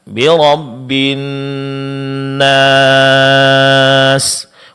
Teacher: Namun ketika kita berhenti pada huruf setelah huruf mat, maka di sini awalnya dia adalah mat tabi'i. Ketika kita berhenti pada huruf sin setelah huruf mat, dia berubah hukumnya menjadi mat arid lisukun, dipanjangkan 4 harakat.